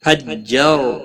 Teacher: را ساکن سے پہلے زبر ہے، را کو پور پڑھنا